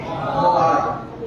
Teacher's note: زبان کی نوک اور ثنایا علیہ کا کنارہ